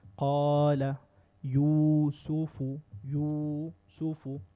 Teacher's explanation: So you're making natural med, duration of 2 counts.